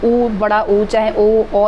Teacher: ऐसे जो स्वर जिसका हम बोलते समय हमारा मुंह गोल हो जाता है वो सारे स्वर आपके वर्तुल स्वर में आएंगे